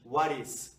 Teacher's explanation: Ao tentar conectar o som em what is, a junção da letra T com o som da vogal I da frente vai soar como ri, ri. Tal como na palavra portuguesa perito.